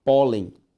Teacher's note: pólen continua sendo uma palavra que é paroxítona, a sílaba tônica é a penúltima, só que agora ela não recebe acento.